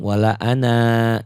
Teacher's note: Wala ana jika dilanjutkan dibaca pendek, jika berhenti dibaca panjang.